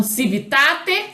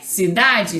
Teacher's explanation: A consoante T é surda, a consoante D é sonora.